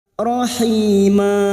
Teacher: Mad Iwat cabang dari mad thi'i sehingga panjangnya Cukup dua harakat tidak boleh lebih tidak boleh kurang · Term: Mad iwad